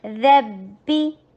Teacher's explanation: با کے اوپر سختی کے ساتھ ملا کے اور کسرہ کے لیے ای کی ساؤنڈ دیجئے ، ربی ہو، ہا میں ہمز ہے، ہا میں رخاوا ہے،